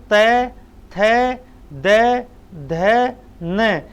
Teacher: अपने ऊपर और नीचे वाले दोनों जो अपने दांत हैं, उन दांतों के बीच में जीभ का फंसना है ना, ये दंते कहलाता है